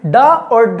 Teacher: इनकी विशेषता यह है कि जब हम इनका उच्चारण करते हैं ड और ढ का, ठीक है, तो क्या होता है? हमारी जो जीभ की जो नुकीली सतह है वो ऊपर तालू में लगकर और झटके से वापस आ जाती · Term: उत्क्षिप्त व्यंजन